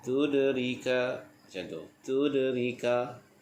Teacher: Ini kita bertemu dengan huruf dal yang membaris sukun, hukumnya qalqalah sughra.